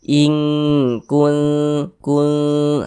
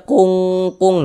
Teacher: cara membunyikannya itu disamarkan kemudian didengungkan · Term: ikhfa hakiki aqrab